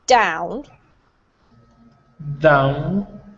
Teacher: your tongue, when you're saying the Spanish D, is just behind your teeth. For the English D, you have to move your tongue further back in your mouth.